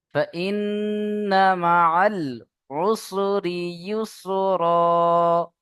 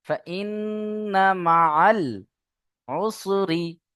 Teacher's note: নুনের উপরে তাসদিদ, ওয়াজিব গন্না, তাই না? নুন তাসদিদকে গন্না করা ওয়াজিব, তাই আমরা এখানে প্রত্যেকেই গন্না করব।